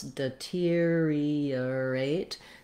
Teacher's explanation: So I wrote that here as earate. We do glide in and out of these R sounds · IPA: /dɪ'tiriəreɪt/